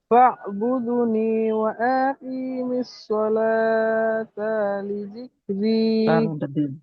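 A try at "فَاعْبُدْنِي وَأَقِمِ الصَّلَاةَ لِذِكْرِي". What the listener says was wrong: হ্যাঁ, ওয়া আকি একটু টান হয়ে যাচ্ছে, টান হয়ে যাচ্ছে না? ওয়া আকি। আপনারা এটা এটা এটা সবাই ঠিক করেন, সবাই আমার সাথে বলেন, ওয়াও জবর ওয়া।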